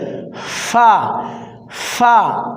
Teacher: সামনের উপরের দাঁতের যে আগা এটা আমার ঠোঁটে লাগতেছে · এই ফা যখন আমরা উচ্চারণ করব হালকা বাতাস বের হবে